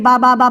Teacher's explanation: दोनों होठों के गिला वाला हिस्सा मिलकर बाहर निकलता है दोनों हाथ का भीका वाला हिस्सा मिलकर बा अदा होता है